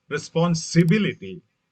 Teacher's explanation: Responsibility, the stress shift to the third syllable.